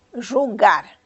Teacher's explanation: É na última sílaba. Por isso, jogar é uma palavra aguda.